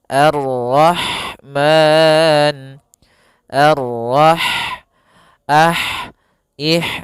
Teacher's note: Kemudian di sini ada huruf ha. Ha dia memiliki sifat hames. Yaitu maka harus mengalirinya nafas